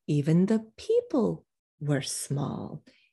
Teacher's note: new it's old information so now when we mention it again we are going to drop down and de-accent the word small